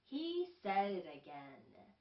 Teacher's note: 여기에서 연음이 되는 것들은 D하고 T가 르 소리로 변하는 거예요. D나 T가 앞에 오거나 강세 있는 데 있지 않으면 르로 변합니다.